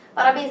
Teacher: É uma oxítona, porque é a última sílaba que é acentuada, e a última sílaba terminada em ens.